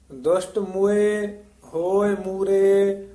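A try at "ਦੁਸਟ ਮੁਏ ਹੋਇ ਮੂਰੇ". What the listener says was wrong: ਹਾਂ, ਦੁਸ਼ਟ ਦੁਸ਼ਟ ਮੁਏ, ਇਸ ਨੂੰ ਛੇਤੀ ਉਚਾਰਨ ਕਰਨਾ ਹੈ, ਮੂਏ ਨਹੀਂ ਕਹਿਣਾ। ਮੰਮੇ ਔਂਕੜ ਹੈ, ਈੜੀ ਲਾਂ ਹੈ। ਦੁਸ਼ਟ ਮੁਏ ਹੋਏ ਮੂਰੇ, ਮੁਏ ਤੇ ਠਮਕ ਲਾ ਦੇਣੀ ਹੈ।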